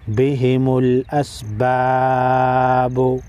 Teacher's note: حمزہ سین زبر اس، با الف زبر با، با پیش بو، بہم الاسباب۔ وقف کی صورت میں با ساکن پر قلقلہ کریں گے کیونکہ با حروف قلقلہ میں سے ہے